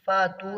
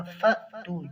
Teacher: فاتو نہیں پڑھنا، فَأْتُوا جھٹکے کے ساتھ،